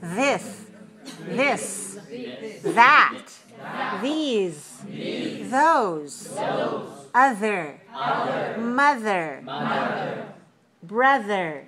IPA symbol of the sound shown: ð